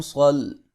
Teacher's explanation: یہاں پر لین ہوگا، اور میم پیشمو صاد زبر لام صل، صاد کو موٹا کر کے پڑھیں گے